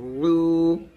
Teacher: আইনটা চাপ দিয়ে নিয়ে আসবেন হলকের মাঝখান থেকে, আইন উল্টা পেশ উ এরকম।